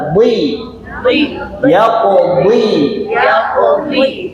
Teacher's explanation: Nah huruf dad huruf tebal. Ketika kasrah sering tertukar dengan huruf dal.